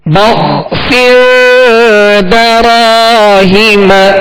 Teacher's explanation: ہا کے نیچے زیر اور میم پر صبر، ان دونوں حرکات کو کھینچیں گے نہیں